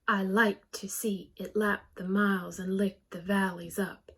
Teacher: we draw back on the unstressed and we go more forward and louder on the stressed syllables so that actually creates a rhythm in the poem unstressed stressed